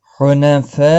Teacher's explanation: حنفاء مد متصل ہے، 4 الف کے برابر کھینچ کر پڑھیں گے